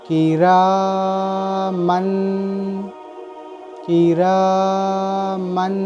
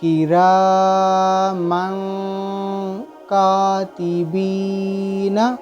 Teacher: یہ دیکھیں یہاں نون ظاہر ہوگا، دو زبر کی تنوین ظاہر ہوگی، اس طرح ظاہر نہیں کرنا ہے، نون دو زبر کی تنوین کی آواز کو ناک میں چھپانا ہے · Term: اکفا